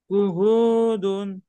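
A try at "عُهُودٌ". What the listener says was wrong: উউদুন, আইনটা গলাটা চেপে পড়তে হবে। এখানে কি রুলস আছে বলেন। কি রুলস আছে, কি নিয়ম আছে? পেশের বাম পাশে জজমালা ওয়াও, পেশের বাম পাশে।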